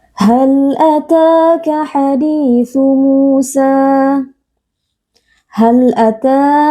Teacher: Musa hal Ata pada huruf ta terdapat Mad thai'i karena ada Alif yang sebelumnya berharakat fathah dibaca panjang dua harakat Mad thii ditandai juga dengan Alif kecil haditu di Mad thii